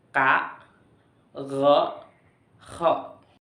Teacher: Yang ketujuh yaitu velar atau al-aswat al-qasobah, yaitu keluarnya huruf dari bagian belakang langit-langit bagian yang lunak dan bagian belakang lidah